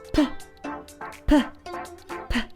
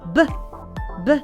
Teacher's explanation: So you say p, b, p, b. You see, you notice the difference between a p, which is not vibration, it's not vibrating, and a b, that it is vibrating. So the same happens with t and d, t, d, t, d.